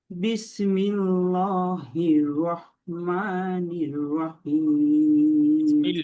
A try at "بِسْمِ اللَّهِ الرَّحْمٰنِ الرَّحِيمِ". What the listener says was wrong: ল হয়ে যাচ্ছে না, কেমন লা বলতে হবে, লা, বিসমিল্লাহ, লা, লা,